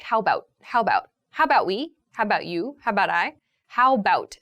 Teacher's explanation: so the a sound kind of disappears